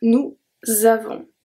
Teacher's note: We don't pronounce the S at the end of avons. And then we have a link as well.